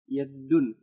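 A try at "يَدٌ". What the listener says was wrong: enggak ada tasdid ya. Yadun gitu. Bukan yadun, yadun.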